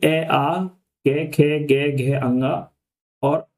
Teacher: इनका जो हम उच्चारण करते हैं वो कंठ की सहायता से करते हैं।